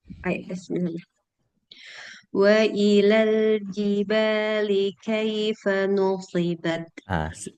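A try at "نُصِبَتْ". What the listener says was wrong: Kemudian sempurna doma bukan no, nu. Bukan no, nu. Ya, tipis ya, bukan no. Kalau no ini tebal.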